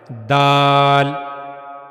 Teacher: دال کو ادا کرنے کے لیے زبان کی نوک کا اوپر والا حصہ اور اوپر کے سامنے والے دو دانتوں کے پیچھے کا مسوڑا استعمال ہوتا ہے۔ زبان کی نوک کا اوپر والا حصہ، یہ زبان کی نوک کا اوپر والا حصہ ہے، اور یہ اوپر کے جو سامنے والے دو دانت ہیں ان کے پیچھے کا مسوڑا، وہاں جا کر جب ملتا ہے زبان کا یہ حصہ، تو جب وہاں سے دال ادا ہوتا ہے۔